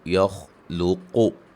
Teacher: यख़्लुक़ु, क़ाफ़ को मोटा, खौ को मोटा, वक्फ़न क़ाफ़ पे क़लक़ला करेंगे, लुक़।